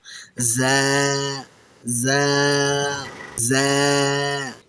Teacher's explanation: এই হরফটি যখন আমরা উচ্চারণ করব তখন আমাদের মুখ থেকে যেন একটি শীষ দেওয়ার মতো বা মৌমাছির পাখার মতো গুনগুন আওয়াজ বের হয়। দাঁত দুটো সামান্য চেপে বলুন জ্যা জ্যা জ্যা। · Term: ঝা